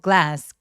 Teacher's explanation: G하고 L이 한 덩어리처럼 한꺼번에 발음이 돼요. glass. 글라스 아니에요.